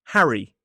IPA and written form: ˈhæri (Harry)